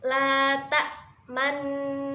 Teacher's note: Ismam ialah bibir mencucu di tengah suara bunyi dengung sebagai isyarat suara bunyi dhammah.